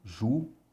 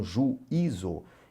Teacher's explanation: E na verdade não, ele é um som distinto, tá? Ele é uma vogal distinta, há uma separação juízo. Então, para que ele não vire ditongo, a gente coloca o acento agudo aqui, tá certo? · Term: hiato